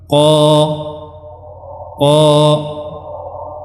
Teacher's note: Qa, qi. Dia juga termasuk huruf-huruf yang tebal, ya, karena pangkal lidahnya dia meninggi. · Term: huruf qaf